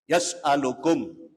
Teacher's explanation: Atau bertemu selain ba dan mim, hukumnya dibaca idhar safawi. Idhar artinya jelas safawi di bibir, cepat cara bacanya.